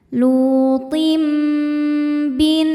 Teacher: Selanjutnya ada hukum iqlab karena ada tanwin kasrah menghadapi huruf ba. Cara bacanya tanwin diganti bunyi mim ya, kemudian dengungkan.